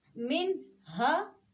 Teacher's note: چونکہ ہا حروف حلقی میں سے ہے تو اب ہم یہاں پر کیا کریں گے, نون کو ظاہر کر کے پڑھیں گے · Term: اظہار